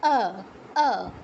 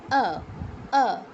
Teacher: কিন্তু সংস্কৃতের ক্ষেত্রে ঠোঁটটা গোল করা যাবে না। সংস্কৃতের ক্ষেত্রে ঠোঁটটা 2 পাশে প্রসারিত হবে। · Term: অ